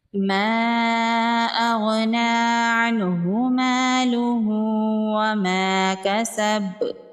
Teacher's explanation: غین حروف مستعلیہ میں سے ہے تو اس کو پر پڑھیں گے